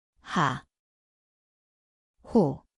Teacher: 히읗, Ang ay parang ito ay isang malambot na mula sa lalamunan. Ngayon, magdagdag ng patinig at makinig.